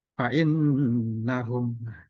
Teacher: Fa'innahum, nah ini ada nun bertasdid. Nun bertasdid dan mim bertasdid ini dibaca dengung. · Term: gunna musyadadah